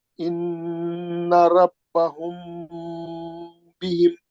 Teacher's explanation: मीम साकिन के बाद बा है, आप वो मीम का गुन्ना कर देना, उसको भी बोलते हैं इख्फा शफी।